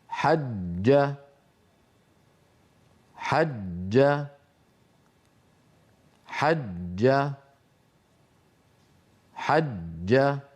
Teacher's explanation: هذا هو النطق الصحيح للجيم المشددة مقفولة المخرج. وأؤكد على قفل المخرج، لا بد من ذلك، وإلا خرجت الجيم رخوة، وهذا خلاف الفصيح. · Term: الجيم المشددة